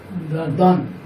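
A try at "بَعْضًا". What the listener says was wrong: বা দন, বা দন। এখানে যদি দান লেখা আছে তা দন হবে। হ্যাঁ, কারণ দর উপর জবর দিলে দ হয়।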